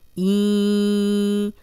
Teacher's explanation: اب این جو ہے وہ ہم ناک میں آواز لے کے جا رہے ہیں، غنہ کر رہے ہیں۔ غنہ ناک میں تھوڑی دیر آواز کے ٹھہرانے کو کہتے ہیں۔